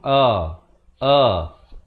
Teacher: pastikan lafaz hamzahnya itu di makhrajnya di pangkal kerongkong